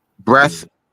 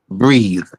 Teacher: I think the tongue comes out farther when you say breath than it does when you say breathe. · Breath is the non-vibrating. Breathe is the vibrating.